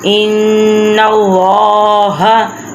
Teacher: ان اللہ یہاں پہ گنہ ہو رہا ہے تشدید کی وجہ سے، نون کے اوپر تشدید ہے تو اس لیے ہم ادھر تھوڑا رک کے ناک میں سے آواز نکال کے پڑھیں گے، گنہ کریں گے۔